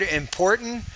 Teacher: you did not pronounce the t you use the glottal stop instead that's perfectly fine that's exactly how native speakers would say that